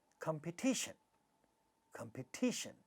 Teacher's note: Third syllable is getting, stressed, and therefore ta at the syllable initial position in this syllable is getting aspirated. Competition, competition, four syllables in this word.